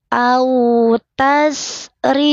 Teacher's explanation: Au tasri, alirkan sinnya, tidak boleh memantul tase. Au tasri, rinya tipis, lidahnya datar, senyum.